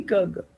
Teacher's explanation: So far as the place of articulation is concerned, kurga is velar, right? So it is the back of the tongue against the soft palate when you say kurga